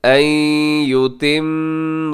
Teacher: यहाँ अन युतिम्म में नून साकिन के बाद या यरमलून का इदगाम कीजिएगा। अन युतिम्म, और युतिम्म में क्या है, मीम मुशद्दद पे गुन्ना कीजिएगा, और गुन्ना करते हुए इसको आगे रा के साथ भी मिला दीजिएगा।